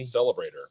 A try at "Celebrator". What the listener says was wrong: Celebrator. Celebrator. You put the emphasis on the wrong syllable.